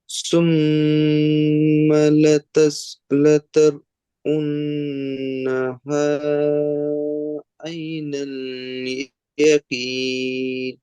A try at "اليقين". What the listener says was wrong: ইয়াকিন এমনি সিম্পল হয়ে যাচ্ছে, ইয়াকিন কিন্তু কাব উচ্চারণ, ইয়াকুই, ইয়াকিন। আর এখানে সুম্মা, সা, জিবের আগা উপরের দাঁতের আগা, সুম, সিন হয়ে যায় না যেন। ইয়াকিন, নুনটা শেষে ভালো করে উচ্চারণ করেন, মিমের মতো যেন না হয়ে যায়।